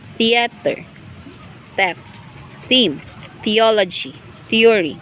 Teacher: voiceless dental fricative initial